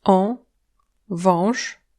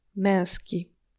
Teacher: Pour les Français, ce n'est pas si difficile parce que ces sons ressemblent pas mal à on et un en français, mais pour être précis, ce sont plutôt des diphtongues dont seule la deuxième partie est nasale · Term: voyelles nasales